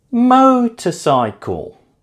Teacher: Motorcycle is stressed on the first syllable.